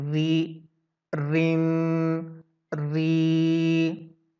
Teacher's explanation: تمام آوازیں جو کہ زیر یا دو زیر یا کھڑی زیر کے ساتھ یوز کی گئیں بالکل باریک پڑی گئی ہیں، جیسے کہ ری، رین، ری.